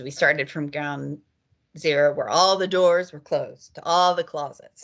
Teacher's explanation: And in this case, she has a falling contour.